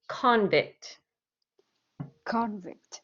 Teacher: i put the stress on the c-o-n part